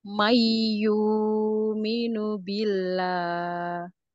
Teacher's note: karena sebelumnya kasrah jadi dibaca tipis